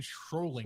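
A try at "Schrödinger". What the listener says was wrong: You added an L. You added the L again.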